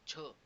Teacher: तर ती म्हणजे कुठली, तर छ जेव्हा आपण उच्चारतो तेव्हा तुम्ही पाहू शकता त्याच्यामध्ये ह चा एक उच्चस्वर लागत आहे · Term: महाप्राण व्यंजने